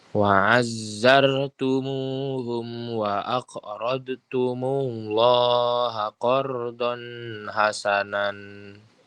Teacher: bacanya dijelaskan tanpa disertai dengung yang berlebihan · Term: izhar